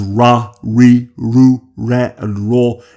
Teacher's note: keep our tongues as still and as flat as possible. Therefore, the sounds represented by these characters are somewhere in between the sounds represented by L and R